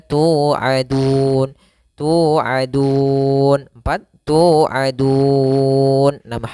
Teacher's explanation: Panjangnya boleh 2 harokat, boleh 4 harokat dan boleh pula 6 harokat. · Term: mad arid lisukun